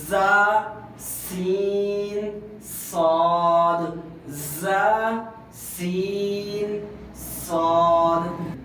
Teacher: یہ زبان کی نوک نیچے والے دانتوں کے کنارے پہ لگے تو پھر تین حروف ادا ہوتے ہیں۔